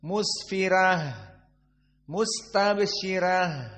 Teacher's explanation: ha alhams harus dikeluarkan